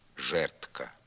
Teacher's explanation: не вимовляється д тільки в слові жердка воно заміняється звуком Т